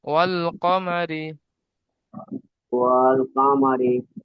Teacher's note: রয়ের নিচে জের আছে তাই র কে বারিক করে পড়তে হবে।